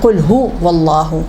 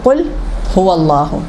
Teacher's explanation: پیش کو یا واو بنا دیا